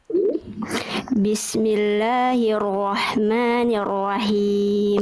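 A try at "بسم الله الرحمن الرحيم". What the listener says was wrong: Oke, hak kecil di akhir kurang ya. Rahmannya udah bagus, tapi himnya kurang berbisik. Ya, dilafalkan lebih dikuatkan lagi tengah tenggorokannya. Bismillahirrahmanirrahim. Him.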